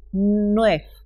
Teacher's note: El sonido de V final de la palabra aparece pronunciado como F, nuef, para decir 9.